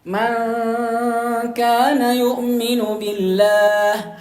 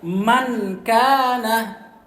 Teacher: nun ketemu dengan kaf. Ya, seharusnya dia di ikhfa, disamarkan nunnya.